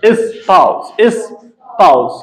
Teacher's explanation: most of the times the Britons use, they call S as Z sounds. And Americans call the S as S sound.